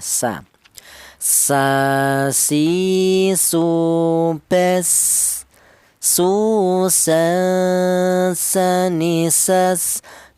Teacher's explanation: huruf sin ini keluarnya huruf berasal dari ujung lidah menyentuh pangkal gigi seri bawah